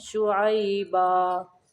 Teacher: دو زبر کی تنوین کو وقف کی صورت میں الف میں ملا کے پڑھتے ہیں، یعنی الف میں بدل کے پڑھتے ہیں، منہ کو کھول دینا ہے۔